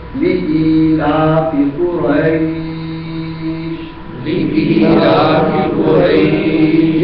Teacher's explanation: یہ جو قریش کو لمبا کیا گیا ہے یہ عارضی مد ہے، مد عارض ہے